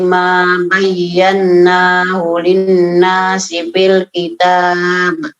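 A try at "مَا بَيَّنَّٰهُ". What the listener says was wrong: Ma bayyanahu. Nunnya ditahan lagi, Bu.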